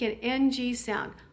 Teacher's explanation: you will have a feeling of closing off the oral cavity and singing through your nose